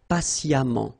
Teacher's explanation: even if you write it EMMENT, phonetically it goes like amant